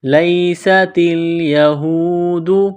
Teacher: سین میں سیٹی کی آواز پیدا کرنی ہے